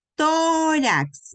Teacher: lleva mayor fuerza de voz en la penúltima sílaba y no termina ni en N, ni en S, ni en vocal, sino termina en X. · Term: las llanas